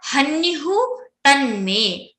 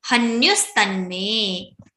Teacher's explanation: visarga will be converted into sakara, that dantavya sa, which sa is recited by the teeth